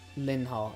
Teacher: an n sound to a h sound isn't exactly the most easy thing. So there tends to be a glottal stop there.